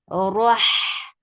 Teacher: Ra is heavy. Give little takrar on Ra.